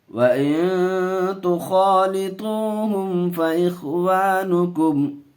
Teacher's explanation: یہاں اخفا کا قاعدہ، گنہ کر کے پڑھیں گے، خا کو منہ بھر کر کے بولیں گے، پر کر کے پڑھیں گے، میم کو ظاہر کر کے پڑھیں گے۔